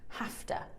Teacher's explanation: we change that vv sound to a f sound and then thewah at the end.